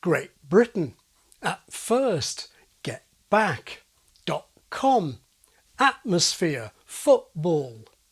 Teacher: there's another phonetic context where glottaling has long flown under the social radar without setting off any alarms. This is before many consonants